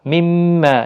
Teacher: مما یہاں پر بھی میم مشدد ہے، غنہ کے ساتھ پڑھیں گے، مد بھی ہے، 1 الف کے برابر کھینچ کر بھی پڑھیں گے۔